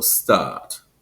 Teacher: Eastern American English and American Theater Standard follow the British way of pronouncing, which was that extended vowel sound